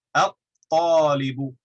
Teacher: We don't say the lam, we skip right into the ta and we double it.